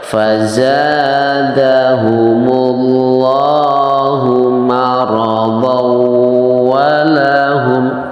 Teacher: Cara membacanya karena di situ adalah bertemu dengan huruf wawu, maka cara membacanya tanwinnya diidghamkan, dimasukkan atau dileburkan ke dalam huruf wawu